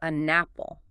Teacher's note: It becomes a napple, almost like one smooth word. The final consonant sound of N links right onto the initial vowel sound of apple. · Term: consonant-vowel linking